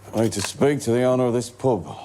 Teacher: The U sound in words like up or cup is flatter and less clear than standard British English. It's a kind of lazy or relaxed vowel. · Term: Distinctive vowel sounds